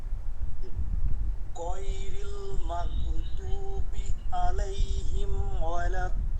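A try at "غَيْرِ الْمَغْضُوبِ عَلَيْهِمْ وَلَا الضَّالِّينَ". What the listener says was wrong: আচ্ছা, দদে আরো টান দিতে হবে, ধীরে ধীরে অভ্যাস করবেন। দ দ শ্বাস ধরতে ধরতে, ঠিক আছে, ধরতে ধরতে আসবে আরো।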